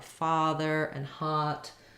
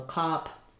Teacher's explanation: Ah that's an open back vowel